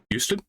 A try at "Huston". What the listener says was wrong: That's what I thought, but it's Huston. It's not Houston. Houston has an O in it.